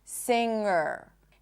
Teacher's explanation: the root of the word has an NG phoneme in it, sound, and that sound is always /ŋ/, it doesn't have a G sound in it